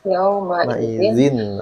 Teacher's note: jadi suara N-nya dialirin dulu sebentar.